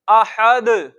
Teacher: उसके बाद दाल पर कलकला, उसकी जो जुम्बिश है सबसे ज्यादा दर्जे वाली है वो होगी, क्योंकि इधर हम हरफे कलकला को खुद साकिन कर रहे हैं, इस वजह से।